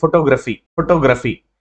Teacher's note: Example చూసుకుంటే ఫోటోగ్రఫీ అనే word ఉంటే సాధారణంగా పలకడానికి ట్రై చేయండి ఫోటోగ్రఫీ. దీనిలో ఠో అనేది ఏమవుతుంది, కొంచెం నొక్కి చెబుతున్నట్లు అనిపిస్తుంది